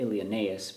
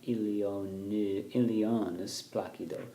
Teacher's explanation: Vergil wants you to take that E and the U together as one syllable, as a diphthong